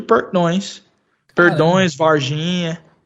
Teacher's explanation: o sul de Minas fala com esse R, que é retroflexo.